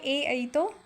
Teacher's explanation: ए और ऐ का उच्चारण स्थान कंठ तालु से होगा